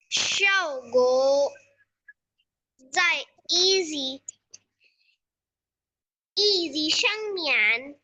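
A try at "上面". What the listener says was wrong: नहीं बच्चे, श्यामियन है। easy नहीं।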